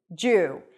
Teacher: It's not a 'duw' sound, it's a 'dj' sound.